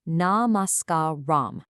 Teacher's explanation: Notice how you kind of stretch out that sca part using the a vowel sound from that table we just looked at.